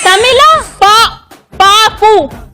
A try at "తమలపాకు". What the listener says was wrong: తమిళ కాదు తల్లే. తమల.